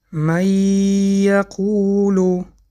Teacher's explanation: حرف نون را نخواندیم بلکه حرف نون را به حرف ی درآورده خواندیم. ادغام کردیم. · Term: ادغام بغنه